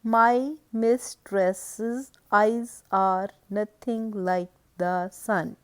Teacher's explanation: first syllable is unstressed and the second one is stressed, and it is a foot with two syllables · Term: iambic foot